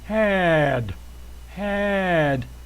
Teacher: the tongue hits the top of the mouth you just cut off that D sound had it's a D sound sometimes this can be a t